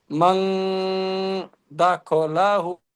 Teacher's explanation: নুন সাকিনের পরে হরফে ইখফার 15টি অক্ষরের মধ্যে দাল এসেছে, তাই নুন সাকিনের হ্যাঁ, দাও। আওয়াজকে নাকে তুলে একালি পরিমাণ গুণনা করে পড়তে হবে